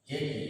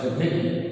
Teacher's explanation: সংবৃত এ যেটা এর মতোই উচ্চারিত হয়, অর্থাৎ চোয়ালটা চাপা থাকে, তাকে আমরা বলি সংবৃত এ। আর বিবৃত এ হচ্ছে যে এর উচ্চারণকালে চোয়াল খুলে যায়, বেশি ফাঁক হয়, তাকে আমরা বলি বিবৃত এ, অর্থাৎ এর উচ্চারণ এর মতোই হয়।